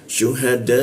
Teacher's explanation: Kita panjangkan tiga ketukan di huruf dannya